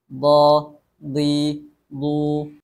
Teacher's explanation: terangkatnya Pangkal lidah sehingganya bunyi huruf d juga tebal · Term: istil